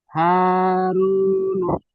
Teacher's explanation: আলিফ মাদ্দাকে এক আলিফ পরিমাণ টান দিয়ে পড়তে হয়। ওয়াও সাকিনের ডান দিকে পেশ আছে, এটি ওয়াও মাদ্দা। ও মাদ্দাকে এক আলিফ পরিমাণ টান দিয়ে পড়তে হয়।